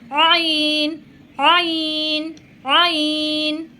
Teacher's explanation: এই আইনটা আপনারা গলার ঠিক মধ্যখান থেকে উচ্চারণ করবেন। উচ্চারিত না হলে সামান্য আঙ্গুল দিয়ে একটু সামান্য চাপ দিয়ে আপনারা এই আইনটা উচ্চারণ করবেন।